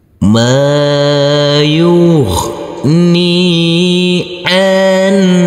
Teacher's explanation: huruf nun yang bersukun kita baca terang atau jelas karena ini bertemu dengan huruf H. Jadi di sini huruf nun bertemu dengan huruf H harus kita baca terang atau jelas untuk huruf nunnya karena ini adalah bacaan idhar.